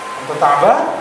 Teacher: nadanya orang bertanya kan naik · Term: intonasi